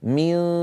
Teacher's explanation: لا ألصق لساني في مخرج الدال، لا ألصقه، ولكن أجعله قريبا جدا. فإذا انتهى صوت الغنة من دو، لما أصل إلى حرف الدال عندئذ أقرع بطرف لساني مخرج الدال، لا أضعه من أول، وإلا سوف أقول من دوني. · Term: النون الساكنة عند الدال